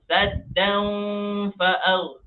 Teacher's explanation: Fa dia bukan termasuk dalam huruf idgham. Saddan dia dibaca dengan samar-samar. Dia mau sebut dan pun tidak. Dia mau masuk fa pun tidak. Di tengah-tengah.